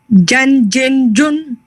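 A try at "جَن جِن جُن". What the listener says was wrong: When you say Jun, don't leave your lips there. Just bring them back. Jun.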